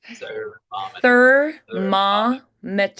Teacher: When you have the thermometer, M, the air has to change direction and go through the sinuses for the M's, but on the other sounds, it has to be passing through the mouth.